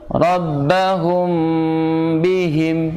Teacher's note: karena mim sukun bertemu dengan huruf ba dan memang harus dengung samar robbahum hukum tapi ada udara yang masuk ke sini pangkal hidung